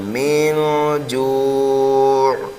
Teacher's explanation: جب ہم وقف کریں گے تو 1 2 3 الف کے برابر یہاں پر ہم کھینچ کر کے پڑھ سکتے ہیں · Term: مد عارض